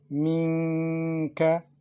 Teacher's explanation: pronounce Noon Sakina with letter Kaf unclear, with Ghunna, to make the sound from the nasal passage and to prolong it for 2 beats in time